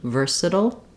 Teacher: um because we have a reduced syllable after it and so it's a dark l and a flap T together · uh and we have almost no vowel here at the end for the T we do a flap sound which is like a light D